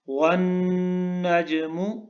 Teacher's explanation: نون کے اوپر غنہ ہے، آواز کو ناک میں لے جانا ہے آپ نے۔